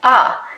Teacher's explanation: Another feature that we see in DC, similar to New York, is the raised thought cloth vowel, that ah.